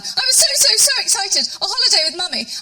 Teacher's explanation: It's a sort of slightly breathy, younger Penelope Keith. She's sort of slightly jolly hockey sticks.